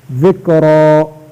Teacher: ذکرا، را پر زبر ہے، را کو موٹا کرنا